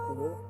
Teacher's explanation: you swallow your L's